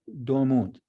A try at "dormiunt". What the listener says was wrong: Dormiunt. Don't forget the I All letters in Latin are pronounced.